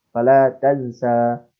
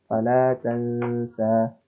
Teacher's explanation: Tansa ini merupakan nun sukun bertemu dengan huruf sin. Nah, ketika huruf nun sukun bertemu dengan huruf sin, maka dia pembacaannya itu harus ikhfa, tidak boleh izhar dan tidak boleh idgham